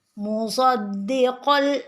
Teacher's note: ini tanwin dengan lam juga idgham bila gunnah, sama dengan yang tadi ya Bapak Ibu.